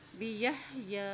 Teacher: या के पर खड़ी ज़बर है, इसको एक हरकत लंबा पढ़ें